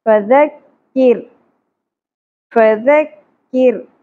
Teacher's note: کاف باریک ہوگا، را بھی باریک ہوگا کیونکہ را ساکن سے پہلے زیر آ گئی · نمبر نو فذکر فا کو زیادہ نہیں کھینچیں گے فا ذکر ذال نرمی سے ادا ہوگا کف باریک ہوگا را بھی باریک ہوگا